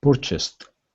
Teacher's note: The stress is at the very beginning.